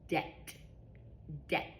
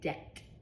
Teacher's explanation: I don't hear a b sound. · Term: silent B